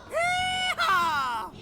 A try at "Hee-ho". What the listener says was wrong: No, it's hee-ho, not hee-haw. What are we, in the Wild West? This is the complete opposite.